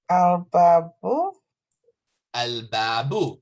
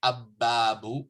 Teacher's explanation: pronounced the lam because the ba is not from the solar letters